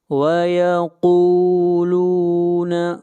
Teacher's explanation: قاف حروف مستعلیہ میں سے ہے، قاف کو موٹا پڑھیں گے